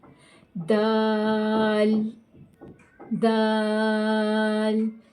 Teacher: جب یہ لام ادا ہو رہا ہے دال کا، تو آپ اگر فیل کر رہے ہیں کہ آپ کی زبان جو ہے وہ ان دو دانتوں، سامنے والے دو دانتوں کی جڑ سے لگ رہی ہے، تو آپ کے دال کا مخرج صحیح ادا ہو رہا ہے۔